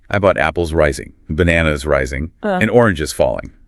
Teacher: pitch might rise slightly on the items before the last one. · That little rise in pitch signals to the listener that the thought group is continuing. The list isn't done yet. · a rise for continuation, a fall for completion